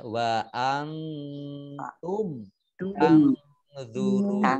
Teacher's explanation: nun sukun bertemu dengan ta dibaca samar-samar. Namanya ikhfa ya wa antum tangzurun.